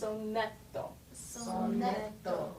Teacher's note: when you say a dental T, it sounds more like a D